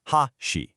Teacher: For chopsticks, the pitch starts high and then it drops, ha-shi. But for a bridge, it starts low and then it rises, ha-shi.